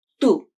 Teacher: in Spanish the word tu is said with a shorter OO vowel.